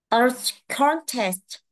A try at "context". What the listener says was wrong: Đúng rồi, nó là context tờ, chữ sờ tờ nhẹ nhẹ nè. Cái chữ vờ em đố vào chữ ơ, thấy không?